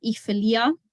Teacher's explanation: So the R there becomes a vowel because it's at the end of a syllable. When it's the plural form, mir ware, or we were, then you get a tapped R plus the E sound there at the end.